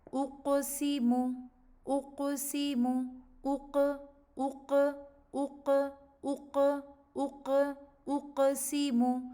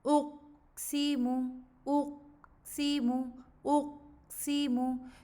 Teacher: میں اپنی زبان کی پچھلے حصے کو قاف کا جو مخرج ہے، جو نرم تالو ہے، اس کے ساتھ میں ٹچ کروں گی اور اس کے بعد میں اس کو چھوڑ دوں گی تاکہ جو پیچھے سے آواز آ رہی ہے تو وہ آرام سے ریلیز ہو اور قاف کا مخرج ہمیں کلیئرلی سنائی دے۔ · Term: قلقلہ